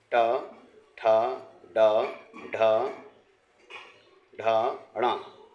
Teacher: इसमें हमारी जीभ मुख के अंदर की ऊपरी छत को स्पर्श करती है और हवा बाहर निकालती है। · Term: मूर्धन्य